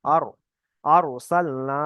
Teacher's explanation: হয়ে যাবে আর মুখটা গোল করতে হবে আর আরসালনা তাহলে এখানে র সাকিনের পূর্বে জবার এসছে তাই এখানে র সাকিন তাকে পুর করে পড়তে হবে